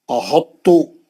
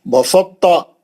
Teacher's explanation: احطو اور بسطتا میں ادغام متجانسن ناقص ہوگا کیونکہ ان کی ادائی میں تا کا اطباق یعنی موٹا پن باقی رکھ کر ادغام کیا جاتا ہے. یعنی آپ توئے جب تے میں چلے جاتا تو تے تھوڑا موٹا ہو جاتا کیونکہ اس کے اندر توئے گھس گیا.